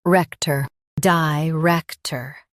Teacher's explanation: Emphasize rec and keep ter soft.